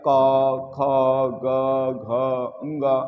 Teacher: अब हम ये जानेंगे क्यों इसका उच्चारण स्थान कंठ होता है। क्योंकि जब उच्चारण करते हैं तो ध्वनि जो है कंठ से उत्पन्न होती है